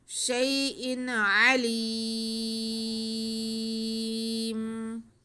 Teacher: یا ساکن سے پہلے شین پہ زبر ہے، یا لین ہے، اب اسے کھینچنا نہیں ہے. آگے حمزہ کے نیچے دو زیر ہیں.